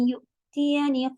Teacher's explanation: حمزہ کی آواز کٹ ہوگی جب وہ ساکن ہوتا ہے